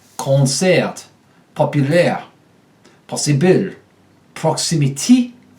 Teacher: the short o becomes ah